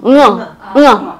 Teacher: 옛 이응이 없어졌는데 이 옛 이응은 뭐냐면 어금니 소리예요. 이응하고 같은 후두음이 아니라 목구멍 소리가 아니라 어금니 소리야